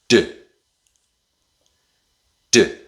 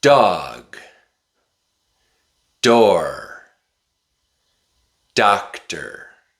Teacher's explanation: the tip of your tongue touches the top of your mouth, a little bit behind your teeth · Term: D sound